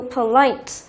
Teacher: tính từ có 2 âm tiết nhưng trọng âm lại rơi vào âm thứ 2